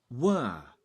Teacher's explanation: remember in English they don't pronounce the R, so it's like were. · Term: weak form